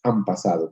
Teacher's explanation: Entonces, fíjense que técnicamente se llama una asimilación de nasales. La nasal se modifica para acercarse, para asimilarse a la consonante siguiente, fenómeno que pasa de forma cotidiana